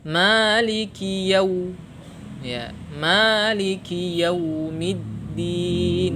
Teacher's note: tidak boleh wawnya ini kita pakai dengan vokal o ya, tidak boleh, tapi pakai vokal u. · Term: bacaan lin